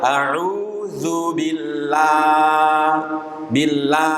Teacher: yang dibaca istifal adalah lam yang dibaca tipis